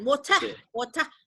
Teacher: Itu kenapa? Karena R-nya itu dihilangkan